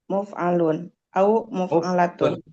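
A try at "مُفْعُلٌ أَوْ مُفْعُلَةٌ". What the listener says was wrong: Muf'ulun. Dengan di dhammah mimnya bukan di kasroh.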